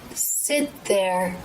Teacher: Sit there, so that we get the feel for the stop T. But rather than taking the tongue tip to the roof of the mouth, I make this stop while bringing the tongue tip through the teeth